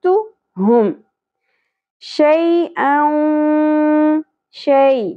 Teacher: یا ساکن سے پہلے زبر حرف لین نرمی سے ادا ہوگا